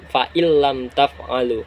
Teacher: Pada intinya idgham bila gunah tanpa mendengung. Ketika nun mati tadi bertemu lam, fa'il lam taf'alu.